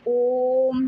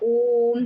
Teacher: और आखिरी हमारा आता है प्लुत स्वर। प्लुत स्वर में दीर्घ स्वर से भी ज्यादा समय लगता है।